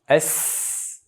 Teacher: Undan keyin o'ziga xos sifati sofir, ya'ni xushtaksimon. Bu harf xushtaksimonroq holatda, ya'ni kichkina joydan havo bosim bilan chiqqanligi sabablisi bu xushtaksimon harf hisoblanadi.